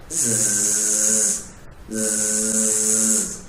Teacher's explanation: desisan, tapi dia bukan nafas yang keluar, tetapi suara yang mengalir. Artinya ketika mengucapkan huruf tersebut, itu nafasnya dimatikan, yaitu zai.